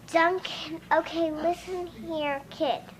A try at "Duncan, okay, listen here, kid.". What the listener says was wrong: Now I want you to slow that down. I want you to look at me like I'm the kid. And I want you to look at me really mad.